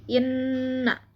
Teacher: Cara membacanya yaitu dengung dengan ditahan sampai 3 harokat, jadi inna. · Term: gunnah